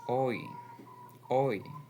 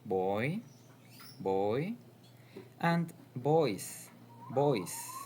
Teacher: If you start with the sound O and glide to the sound I, you get the diphthong oi, oi. You can find it in boy, boy, and boys, boys.